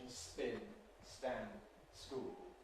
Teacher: The effect of the S is to remove the aspiration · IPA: [sp⁼ɪn], [st⁼ænd], [sk⁼uːl]